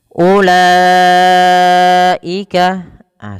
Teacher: wajib dipanjangkan empat harakat pada lafal lanya. dan tidak boleh dikurangi atau lima harakat. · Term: mad wajib muttasil